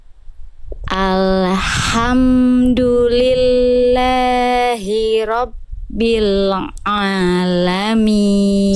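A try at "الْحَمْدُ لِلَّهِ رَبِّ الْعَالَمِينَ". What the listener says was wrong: Sip, yang ini lam sukunya, yang ini terputus, jangan terputus. Nah ini jadi kesalahan yang sering kali terjadi kalau kita temponya lambat, huruf-huruf sukun jangan diputus. Alhamdulillahi Rabbil Al-nya jangan putus. Alhamdulillahi Rabbil Alamin.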